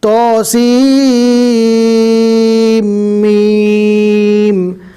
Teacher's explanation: سین کو میم کے ساتھ ملانا ہے، توسین میم، اس طرح نہیں پڑھنا، سیم میم، میم کے اوپر تشدید ہے اس لیے سین کو میم کے ساتھ ملایا جائے گا۔ تو کو کم کھینچنا ہے اس لیے کہ اس کے اوپر کھڑا زبر ہے، سین اور میم کو تھوڑا زیادہ کھینچنا ہے اس لیے کہ اس کے اوپر مد ہے